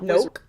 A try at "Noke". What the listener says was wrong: Noke. No, not nope. Noke.